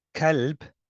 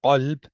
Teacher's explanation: kaf, bit light, and one is qaf, it's a bit more of a heavier sound or a full mouth sound. So for example, if I was to say kalb with a kaf, that means dog.